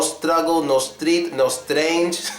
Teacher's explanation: it's more of a shr sound than anything